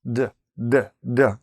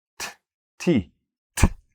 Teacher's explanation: D, D, D, no air. T, T, T, air coming out.